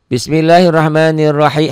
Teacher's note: r-nya dibaca dobel r-nya dibaca tebal karena baris di atas ro tafkhim